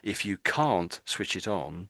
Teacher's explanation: when I said this word, can't, I gave a lot of emphasis to that word there